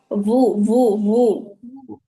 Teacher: ওয়া আর বায়ের মধ্যবর্তী একটা উচ্চারণ হবে।